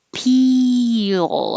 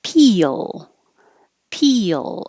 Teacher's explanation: your tongue is very high peel and then it slides down and makes the y sound so it's almost two syllables